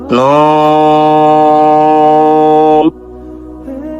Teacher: চার আলিফ টানতে হবে, জিহ্বার আগা তালুতে লাগবে।